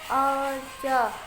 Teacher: Alja ifa hakiki, karena nun sukun bertemu ja. Cara membacanya nun sukun disamarkan ke jim.